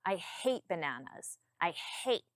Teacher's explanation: notice how my tone changes when I say I hate bananas. I hate my tone comes down.